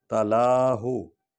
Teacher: لام کو لمبا کریں گے کیونکہ کھڑا الف ہے